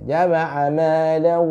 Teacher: tanwinnya bertemu dengan huruf waw, ya, tapi tetap ditahan 2 harokat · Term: idgham bi gunah